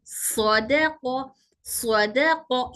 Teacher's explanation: सद में आवाज मोटी करना है दाल में हल्की करना है और कफ में फिर मोटी करना है · सद सफिया है हमारी जबान की नोक दोनों दांतों के किनारों को टच होगी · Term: मोटा स